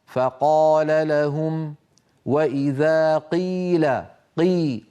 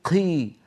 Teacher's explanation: هذا الهواء الذي يلي القاف يحولها الى حرف مهموس بالتاثر اللهجه العاميه